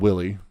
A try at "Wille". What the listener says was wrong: I'm thinking the W's are supposed to be pronounced like a V. Because it seems German.